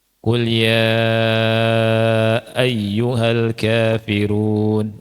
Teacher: Ya-nya itu 4 atau 5 harokat karena dia mad jaiz munfasil. Ya, itu mad jaiz munfasil di Al-Kafirun itu harus dibaca 4 atau 5 semua.